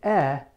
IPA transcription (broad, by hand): ɛ